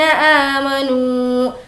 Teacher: والذین آمنوا, ذی کو کھینچیں گے, یا مدہ. نو کو کھینچیں گے, واو مدہ